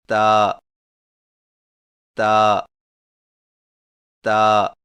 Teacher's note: تا کی ادائیگی میں زبان کی نوک کو سامنے والے اوپر کے دو دانتوں کی جڑ سے لگا کر باریک آواز میں پڑھیں، یعنی تا تا تا۔